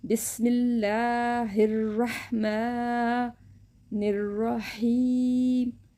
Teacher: چھوٹی ہاء کو ہم نے حلق سے نہیں نکالنا، تو اس کو ہم نے ایسے پڑھنا، بسم اللہ ہر، بسم اللہ الرحمن۔ جو بڑی ہاء ہے اس کو ہم نے حلق سے نکالنا ہے